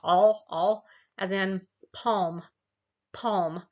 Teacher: you can feel the tongue comes down and low in your mouth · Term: low back